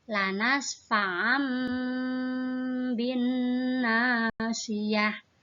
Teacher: huruf ba yang di depan itu berubah bunyinya menjadi huruf mim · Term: iqlab